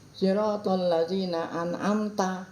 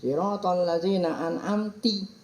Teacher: ngerobah baris yang harusnya dibaca ta fathah dibaca kasroh